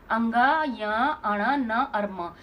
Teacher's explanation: इनको अनुनासिक बोलते हैं जैसे बोलने में भी ना आ ऐसे साउंड आती है